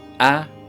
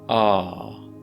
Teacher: obviously /æ/ is the short sound, /a:/ is the long sound